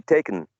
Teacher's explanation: go from k to n, and an elision of the vowel sound